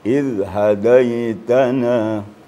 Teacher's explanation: Ujung lidah ditemukan dengan ujung gigi atas. Jadi maka bacanya sedikit agak lembut.